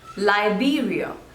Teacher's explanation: so there are total three syllables and the stress is on the second one